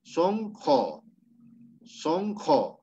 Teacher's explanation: cuando hay fonemas J en la pronunciación se va a modificar ya o sea esa u se convierte en o